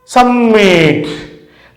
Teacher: Submit. The first syllable is unstressed. The last one is stressed.